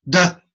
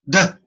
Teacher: If you take the letter T and you put a voice in it, T D, now you have a D.